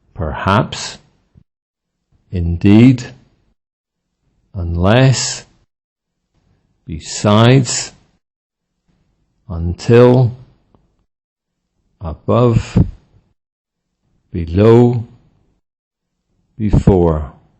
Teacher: Adverbs and prepositions with stress on the second syllable